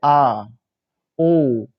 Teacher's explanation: पश्च स्वर जो होता है उसमें जीभ का पीछे वाला भाग, जब उसको उच्चारण किया जा रहा है उसके पीछे वाला भाग काम कर रहा है, तो उसको बोला जाता है पश्च स्वर।